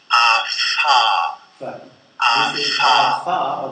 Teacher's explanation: The next place of articulation is the labiodental place of articulation, where we can observe a constriction between the lower lip and the upper teeth. A typical consonant would be fa.